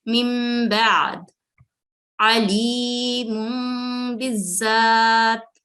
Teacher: हमने नून साकिन को मीम में बदलना है